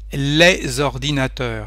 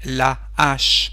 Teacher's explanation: No hay conexión entre las dos palabras